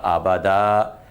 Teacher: جب ہم اس کو وقف کریں گے تو وقف میں یہ پڑھا جائے گا آبادا، چونکہ جو زبر کی تنوین ہوتی ہے وہ وقف میں الف کے ساتھ بدل جاتی ہے